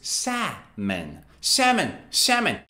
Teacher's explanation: l is silent so you don't say salomon or solomon · So both American people and British people say salmon, no L.